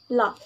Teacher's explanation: voiced alveolar lateral sound la